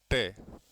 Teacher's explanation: एक अलग है ट जो ट जो है यह मूर्धन्य है मूर्धन्य है इसलिए दतीय नहीं है यह यह मूर्धन्य है और यह सही विकल्प होगा द ट वर्ण जो है यह दंत्य नहीं है मूर्धन्य है